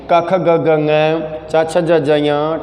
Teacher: इन वर्णों का उच्चारण करने पर मुख के स्थान आपस में एक दूसरे से स्पर्श कर रहे हैं